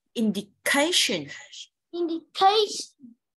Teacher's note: Nhớ là âm khờ phải bật hơi nhé.